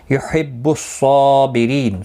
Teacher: يُحِبُّ الصَّابِرِينَ صاد مستعلیہ ہے، پر پڑا جائے گا، اس کے اوپر کھڑی زبر بھی ہے، ایک الف کی مقدار کے برابر کھینچ کر پڑھیں گے. بری را زیر کی وجہ سے باریک پڑا جائے گا، ری یا مدہ ہے، اور وقف کی صورت میں نون ساکن پڑا جائے گا.